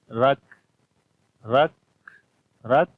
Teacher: کاف کے اندر صفت حمز اور شدت کلیئر آئے گی. رک، رک، رک کے اوپر شدت اور سانس کو جاری کیا تو حمز.